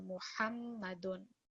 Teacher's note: you really want to try and bring that ha from middle of your throats